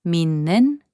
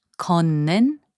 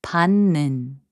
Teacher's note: When the final consonant 디귿 is placed before 니은 or 미음, its sound changes to 니은